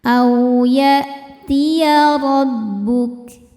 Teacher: Au ada harfulin karena ada waw sukun sebelumnya fathah, dibacanya lembut.